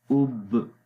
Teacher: جہر بھی آ گئی، مطلب شدت کے اندر دباؤ محسوس ہوا، اور جب آواز کو ریلیز کریں گے تو قلقلہ کی آواز آ جاتی ہے